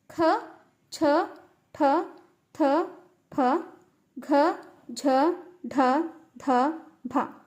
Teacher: ಹೆಚ್ಚು ಪ್ರಾಣ ಅಂದ್ರೆ ಹೆಚ್ಚು ಉಸಿರಿನ ಸಹಾಯದಿಂದ ಉಚ್ಚರಿಸುವಂತಹ ಅಕ್ಷರಗಳನ್ನ ನಾವು ಮಹಾಪ್ರಾಣ ಅಂತ ಕರೀತೀವಿ